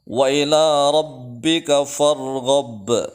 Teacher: ada ra tafkhim yang dibaca tebal yaitu dengan memonyongkan kedua bibir ke depan